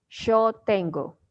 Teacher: it's in Argentina and Uruguay, I think. They use sh like sh in English, so they say yo tengo.